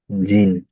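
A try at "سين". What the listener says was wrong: জিম না, এটা হবে সিন। দেখুন এটা কেমন দেখতে, দেখুন ভালো করে দেখে না, ওইটা হলো সিন, দেখুন এই এই এই সিন, এই দেখছেন?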